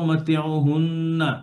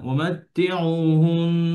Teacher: যদি নুনের উপরে থামেন, তাহলে গুণনা করে থামবেন, জবর বলে থামবেন না।